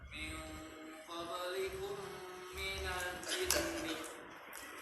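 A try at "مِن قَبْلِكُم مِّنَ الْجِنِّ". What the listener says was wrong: Yang lama, gunah-gunahnya yang lama. Minal jinni.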